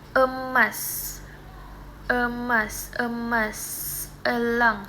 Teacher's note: disebut epepet atau bunyi paling netral di antara semua vokal